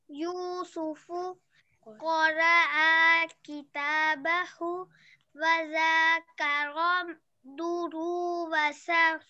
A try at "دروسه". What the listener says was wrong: There is no ways to make ru long, extended.